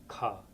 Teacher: Wiley represents the breathiness of the aspirated ka with an H